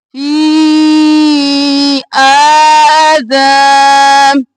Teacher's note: ایک الف کے برابر آ کو کھینچیں گے، 3 الف کے برابر فی کو کھینچیں گے